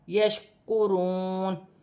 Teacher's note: کاف باریک ہے، واو ساکن سے پہلے پیش ہے تو واو مدہ بنے گی، واو کی صورت میں زبر گر جائے گی اور نون ساکن ہو جائے گی.